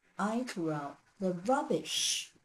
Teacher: However, if in English, we wish to shift the focus from I to the object, we could do one thing. We could actually use intonation and stress in order to make rubbish stand out.